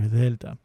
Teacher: and that's how you get that soft Thea um and then to get the Theta it barely touches the bottom of your teeth if at all and it just gets that much softer Thea anyway that's how